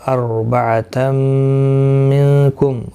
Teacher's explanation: را ساکن سے پہلے زبر ہے اس لیے پر پڑھا جائے گا · نون ساکن کے بعد حروف اخفا کا کاف اخفا حقیقی ہوگا